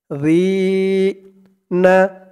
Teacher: আর জালের উচ্চারণটা একদম নরম পাতলা করতে হবে। জিহ্বার মাথা ওপরের দাঁতের মাথার সাথে লাগবে জালের উচ্চারণটা করার সময়।